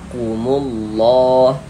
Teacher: lafaz allahnya dibaca tebal dibaca tabkhim huruf lam jalalahnya ditebal Sehingga kita baca kumullah seperti itu. · Ada harokat dhammah nih atau tanda baca dhammah atau harokat fathah, maka lafaz Allahnya dibaca tebal, dibaca tafkhim, huruf lam jalalahnya ditebalkan